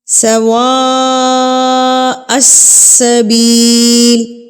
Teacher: اس مد کو ہم 4 حرکات کے برابر کھینچتے ہیں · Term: مدہ متصل